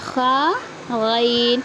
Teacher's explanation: اس کے بعد ہے غین. جس طرح سے خا منہ کے جانب والے حلق کے حصے سے نکلتا ہے ویسے ہی غین بھی نکلیں گا